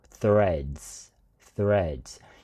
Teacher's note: reh呢個re呢個音咧，係要拉長少少讀threads